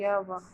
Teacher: इनके बोलने से मुख द्वार बहुत संकरा हो जाता है और हवा स्वर की भांति बीच से निकल जाता है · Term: अर्ध स्वर